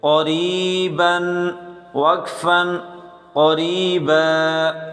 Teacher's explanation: قاف کو موٹا کر کے پڑھیں، را کو بریک پڑھیں کیونکہ زیر ہے